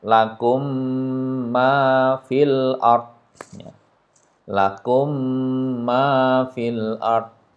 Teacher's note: suara mim sukun itu dimasukkan ke huruf mim yang ditemuinya dengan mendengung panjangnya dua harakat kita Contohkan yang pertama ini ada mim sukun ketemu dengan mim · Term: idgham mimi